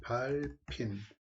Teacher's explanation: 그 다음 발의 발핀, 발핀 하고서 비읍하고 히읗이 만났잖아요. 그럼 뭐가 된다? 피읍이 된다. 그래서 발음이 발핀. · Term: 축약